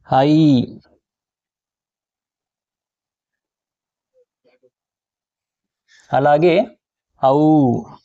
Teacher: మూడు మాత్రల కాలంలో ఉచ్చరింపబడే అక్షరములని మనం ప్లుతములు అని అంటాం.